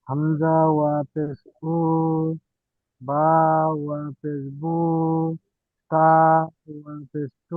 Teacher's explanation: ওয়া মাদ্দাকে এক আলিফ পরিমাণ টান দিয়ে পড়তে হয়